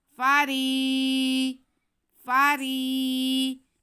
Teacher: را کے بعد یا ساکن ہے، اس لیے ہم را کو کھینچیں، کیونکہ یہ ساکن سے پہلے زیر ہو تو یا مدہ ہوتا ہے، اس لیے ہم را کے آواز کو کھینچ لیں گے۔